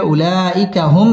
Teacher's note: সাকিনে ইজহারে খাস গুন্না ছাড়া পড়তে হবে